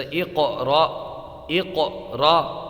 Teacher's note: تو اس کی قاف کی آواز پلٹ رہی ہے، یہی قلقلہ ہے۔ اقرا اس طرح نہیں پڑھنا ہے، بلکہ اس کو پڑھنا ہے اقرا۔